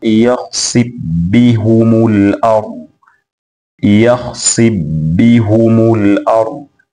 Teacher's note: amefanya idgham fa kwenda katika herufi ya ba